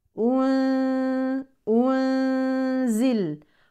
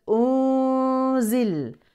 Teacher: ننتبه هنا لضم الهمزه ثم العوده لوضع السكون مع النون المخفاه